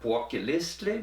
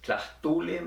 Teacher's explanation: Here are some examples from Tetelcingo. They are all penultimate stress.